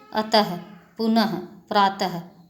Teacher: अक्षर के अंत में लगने वाले 2 बिंदुओं को विसर्ग कहते हैं। इनका उच्चारण हल्के ह शब्द की भांति होता है